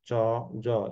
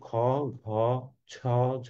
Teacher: ক আর গ চ, জ এগুলোতে কি থাকে না? বাতাসের প্রাবল্য থাকে না। কিন্তু খ, ঘ, ছ, ঝ এগুলোতে কি থাকে? আমার বাতাসের প্রাবল্য থাকে। মানে বাতাসের চাপটা অনেক বেশি থাকে। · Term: মহাপ্রাণ